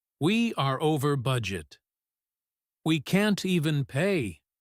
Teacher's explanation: It is the rhythm of defeat. There are no ups and downs in his voice, just a steady, low tone. · The linking is minimal. The words are distinct. This flat rhythm indicates sadness or resignation. · The rhythm here is flat and heavy.